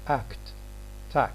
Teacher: in these two words k is before a consonant act tax so here the uh k is unreleased act act we don't say aka act acts tax so it's